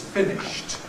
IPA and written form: ˈfɪnɪʃt (finished)